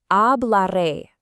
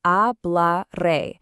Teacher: Phonetically, we say it like a bla re. Remember, the H at the beginning is completely silent in Spanish